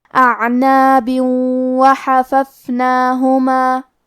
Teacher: کلمت اعناب کے آخری میں با کے نیچے تنوین زیر ہے، پھر حرف الواو ہے کلمت وحففناہما. واو حروف الادغام بغنہ میں سے ہے تو ہمیں یہ حکم کو غنہ اور تشدید کے ساتھ ادا کرنا ہے